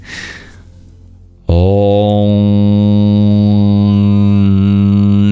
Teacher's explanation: The M with a dot under it is not an ordinary M. It's called an anuswara, an inner sound. It's a nasalization. Om. Your lips don't even have to touch to do the anuswara.